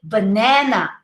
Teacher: in english you say banana ah not nasal